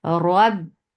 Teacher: there will be a cut of sound because ba is shadida. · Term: shidda